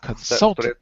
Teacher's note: So the stress is on the second syllable.